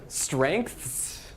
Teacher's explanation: there's even like a hidden k in there when you pronounce it that we don't write